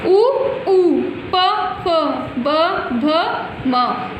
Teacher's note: इन वर्णों का उच्चारण दोनों होठों से होता है, अतः ये ओष्ठ्य वर्ण कहलाते हैं